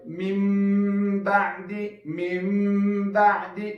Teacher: تقلب النون الساکن میما. نون ساکن به په میم بدلو. دا نون ساکن مو په میم بدل کړو. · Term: اقلاب